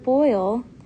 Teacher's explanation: vowel sounds they combine two vowel sounds into one syllable so when you say the word boil you start with one vowel sound and glide to the next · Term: diphthongs